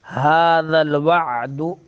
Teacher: وعد عین درمیان حلق سے، دال جو ہے شدیدہ حروف میں سے، سخت حروف میں سے ہے